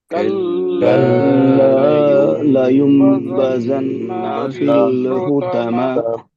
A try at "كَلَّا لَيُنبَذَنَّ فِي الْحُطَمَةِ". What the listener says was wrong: देखिए बदन ना यहाँ पे भी खींच गया ना नहीं कल्ला लयुंबदन्न फिल हुतामा